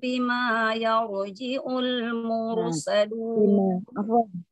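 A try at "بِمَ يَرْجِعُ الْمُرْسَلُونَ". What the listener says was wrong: Afwan, bimanya itu memang biasanya bima ada alifnya ya. Nah, ini bimanya tidak pakai alif, hati-hati. Iya, kepanjangan. Satu harakat saja. Bimayar Gitu.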